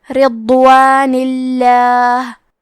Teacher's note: آخری میں نون کے نیچے زیر ہے، لہذا لفظ الجلالہ کے لام کا حکم ہے ترقیق، تو ہمیں حرف اللام کو پتلی آواز میں پڑھنا ہے · کلمت رضوان میں حرف الضاد ہے، ضاد کے ادائیگی زبان کے کروٹ اور اوپر کے داڑھوں کی جڑ سے ہے، ضاد حروف تفخیم میں سے ہے، تو ہم یہ حرف کو موٹی آواز میں پڑھیں گے، اور کیونکہ یہاں ضاد ساکن ہے تو ہمیں ضاد کو ظاہر بھی کرنا ہے۔